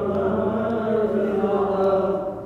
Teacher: Kita tampakkan sifat yang pertama takrir pada huruf ra. Irti'ad tarful lisan, ada getaran di ujung lidah. Dan getarannya tebal ya.